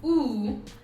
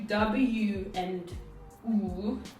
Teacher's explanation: if i do ooh the lips just go into that position and i make the sound but if i do w and ooh it there's this motion